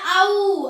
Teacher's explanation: ஒளிக்கக்கூடிய முயற்சி இறுதியில் உ அப்படின்னு முடியும் அதனால அந்த அவ என்ற நெடில் எழுத்துக்கு உ என்ற குறில் எழுத்து, இணை